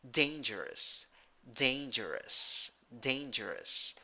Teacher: nine letters eight sounds three syllables the first syllable is the one that is stressed in the first syllable you have a with a hat ah · the second and third syllables uh have schwa a neutral sound